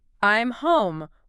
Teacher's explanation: But if you connect them, the M sound acts as a smooth gear shift. Your lips were already together for the M in I'm, so you just immediately open them right into the H sound of home without stopping the vibration in your throat.